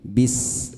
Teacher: fa sa ha itu salah satunya bacaan hams, dibaca harus lepas berdesis